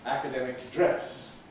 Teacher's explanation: Double stressed words like academic, when they're in context, followed by another strong stress, by accent, normally undergo this stress shift effect, where it's only the first syllable that gets an accent on it, academic dress.